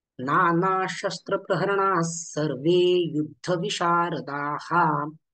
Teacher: आता राहिले विसर्गाच्या पुढे 3 व्यंजन आले, श श स. तर विसर्गाचं उच्चारण न करता विसर्गाच्या पुढे श श स यांपैकी जे व्यंजन आलेलं आहे त्या व्यंजनाचंच द्वित्व उच्चारण केलं जातं